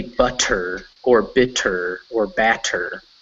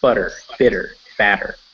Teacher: You say it with a sound that is kind of between a T and a D.